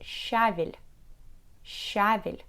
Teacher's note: Most Russian people get used to stress the first syllable in this word